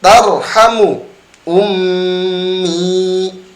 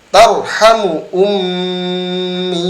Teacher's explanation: Mim adalah huruf bibir tetapi dia mempunyai makhraj hidung juga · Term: huruf gunnah